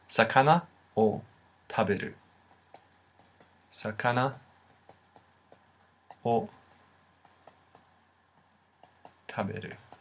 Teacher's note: The O character, while technically pronounced as wo, essentially sounds like O in real speech.